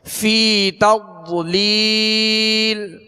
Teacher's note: ضاد کو پر بھی پڑھنا ہے کہ حروف مستعلیہ میں سے